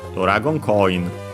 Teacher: low the first mora because of the rule. High up to ko included, and then low